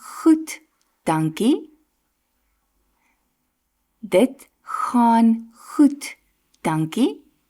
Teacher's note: Instead of the soft [sighs] sound, the tongue is lifted a bit in the back of your throat, making the sound louder and harsher